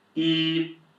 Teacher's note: First tone is high, flat,